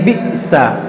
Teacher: حمزہ ساکنہ ہے، اس کو ہم جھٹکا دے کر پڑھیں گے